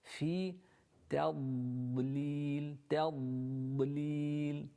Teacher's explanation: Alam yaj'al kaydahum fi tadlil. Fi, again the fa with the central incisors of the upper jaw touching the wet part of the bottom lip